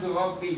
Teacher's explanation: Nah di sini lam bertemu ro, lam mati bertemu ro, ini lamnya nggak kebaca, kita langsung aja ke ro-nya, jadi dibacanya kurobi. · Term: idgham mutajannisain